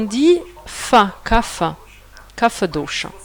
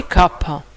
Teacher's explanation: On n'a pas en sanskrit la consonante fa. Ce labial dental, on n'a pas. On le fait en hindi, on le fait en gujarati, mais on ne le fait pas en sanskrit.